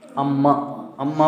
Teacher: तो म जो है ओष्ठ है। अम्मा बोलेंगे तो वो मिलेंगे ही मिलेंगे।